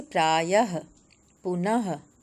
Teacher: विसर्ग जो है वो इस ध्वनि चिन्ह का उच्चारण ह के समान होता है, आधा ह।